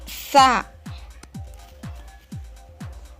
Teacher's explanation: Huruf sa ini cara penyebutannya, ujung lidah dirapatkan dengan gigi atas.